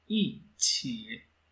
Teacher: the first tone of E will be changing into the fourth tone